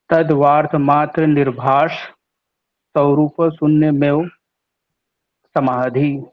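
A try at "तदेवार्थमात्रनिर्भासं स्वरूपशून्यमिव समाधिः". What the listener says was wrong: तद्वार्थ बोला आपने, तद्वार्थ नहीं है, ध्यान से देखिए क्या है ये। तद्वार्थ है, क्या है ये?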